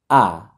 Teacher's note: আ হচ্ছে হামজা জবর আ হলকের শুরু থেকে